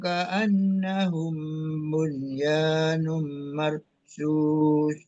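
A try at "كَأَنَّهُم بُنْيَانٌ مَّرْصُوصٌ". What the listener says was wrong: Nah, cuman paling dirapikan lagi ka'annahum mim semubak tadi lebih nahan lagi ya safawinya. Bunyanum, dan nunnya dibaca jelas. Bunyanum, namanya izhar mutlaq ya. Jadi kan harusnya nun itu kalau dipisah, dipenggal itu dia masuk ke idgham bi gunnah ya. Kalau dipenggal ya, kalau dia nggak beda kata, ini dalam satu kata itu jadi apa izhar mutlaq.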